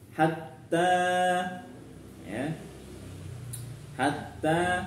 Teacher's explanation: hatta taknya panjang dua harokat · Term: mad tabi'i